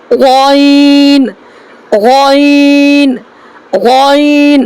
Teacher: तो शुरू हल्के से हमज़ा, दरमियान हल्के से आइन हा, और आखिर हल्के से गौइन और खौ निकलता है